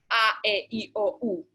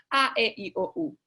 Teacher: There's like, if you speak, for instance, if you sing in Italian, say, let's take that language, they have a very straightforward way of pronouncing the vowels, which is a, e, I, o, u. Very straightforward, very open with a little glottal onset